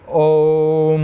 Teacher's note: ओम ज़्यादा समय लग रहा है, तो ये दोस्तों पल्लुत स्वर होता है।